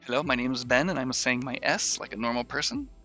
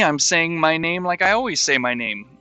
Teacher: i say my s's with my tongue between my my teeth like a snake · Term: s lisp